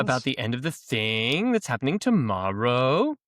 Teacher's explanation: they constantly end the sentences with the rising inflection so that they appear to be asking questions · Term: uptalk